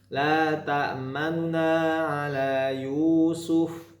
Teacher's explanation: dibaca nun yang berharokat dhammah dengan 1/3 harokat, dibaca cepat. Yang bisa mendengar ini hanya orang yang terdekatnya saja ya. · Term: raum